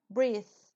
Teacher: la th final no todas pero la mayoría se pronuncia como una Z española breath Entonces ustedes sacan la lengua y sale aire breath entonces